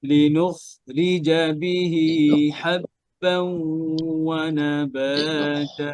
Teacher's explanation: খটা উচ্চারণ করার সময় খেয়াল করে যেন গলার শেষ থেকে হচ্ছে কিনা, হ্যাঁ, কন্ট্রোলের শেষ থেকে।